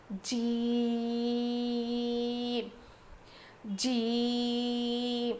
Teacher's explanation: جیم ادا ہوتا ہے زبان کے بیچ والے حصے سے. زبان کے بیچ کے حصے سے جیم ادا ہوتا ہے.